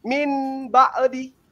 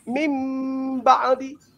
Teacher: Nun mati hilang menjadi ba. Itu iklab.